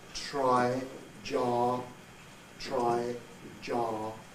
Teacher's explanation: think of them as affricates more like ch and j